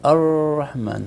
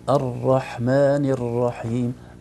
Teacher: الراء فيها تكرار فعلا في ارتعاد خفيفه في طرف الراء لو منعنا التكرار تماما ستصبح راء يعني يا اما شديده جدا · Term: تكرار خفيف